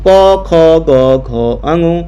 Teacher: कंठ से उत्पन्न होने वाले वर्ण है